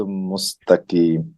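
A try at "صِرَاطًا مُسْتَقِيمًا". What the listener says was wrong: সিরাতাম মুস্তাকিমা। এখানে গুন্না ছিল কয়েকটা, কিন্তু একটাও গুন্না করা হয়নি। সিরাতাম, তম গুণ হবে। এখানে গুণে দেখেন, মিউ, মিউ একটা গুন্না, হিত্তাতুন আরেকটা গুন্না, সিরাতাম, এখানে একটা গুন্না, তিনটা গুন্না। আর যদি আমরা মিলিয়ে পড়ি, মিউ ওয়াকিন হিত্তাতুন নাগফির লাকুম সিরাতাম মুস্তাকিমা।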